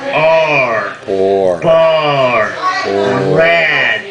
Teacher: the tongue curls back right it curls back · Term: Retro Flex sounds